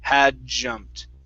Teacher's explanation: with this d and the j here you're basically going to mush those together